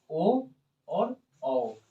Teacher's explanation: कंठ और ओष्ठ से, कंठ और ओष्ठ से बोलाएगा आपका ओ और औ